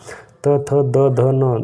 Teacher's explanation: त थ द ध न इसका उच्चारण स्थान दंत है